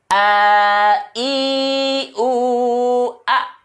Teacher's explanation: Ya, kalau diperhatikan dia istifal, posisi lidah, ya, posisi lidah istifal. Dan asli huruf itu keluar dari pangkal tenggorokan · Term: huruf hamzah